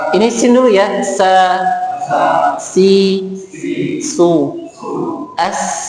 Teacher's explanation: Karena tiga huruf ini memiliki sifat sofir. Sofir itu suaranya tajam ya. Jadi kita ada tetap mengalirnya.